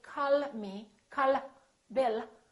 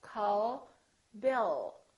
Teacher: it touches right behind the upper teeth and it stays there so the American L is prolonged it's softer and longer